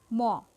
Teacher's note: যখন আমরা উচ্চারণ করি তখন আমাদের ঠোঁটে ঠোঁটে সংঘর্ষ সৃষ্টি হয়